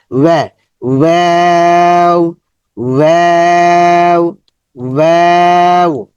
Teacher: ওয়াও, ঠোঁট গোল করব। গোল করার পর আমরা মাঝখান দিয়ে আমরা এই আওয়াজটা বের করব। ওয়াও, ওয়াও, ঠোঁটের উপর থেকে চলে আসবে, ভিতর থেকে না।